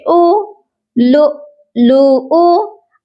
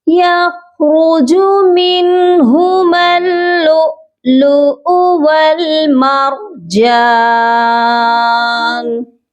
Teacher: یہ والا حمزہ جو ہے یہ ساکن نہیں ہے، اس پر ہم جھٹکا نہیں دیں گے کیونکہ حمزہ پیش کی حرکت کے ساتھ ہے، اور اس کے نیچے بھی واو ہے، اس واو کو بھی ہم نہیں پڑھیں گے۔